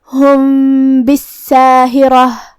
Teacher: با حروف الاخفاء الشفوی میں سے ہے اور اخفاء کا معنی ہے چھپا دینا تو ہم یہاں میم کو چھپاتے ہوئے اور غنہ کے ساتھ یہ حکم کو ادا کریں گے